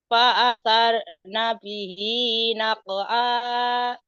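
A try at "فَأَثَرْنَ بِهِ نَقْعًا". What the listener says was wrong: Fa'asar sa ujung lidah ya. Fa'asar nabihi naq'a. pokoknya kalau bukan pawasat tapi pawasal tok tok. Fawasal tok. Fawasal tok iya.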